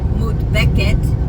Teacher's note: the feminine singular has the stress on the second to last syllable